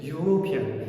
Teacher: I harfi unli, lekin buni biz talaffuz qilganimizcha European, Y undoshi bilan talaffuz qilamiz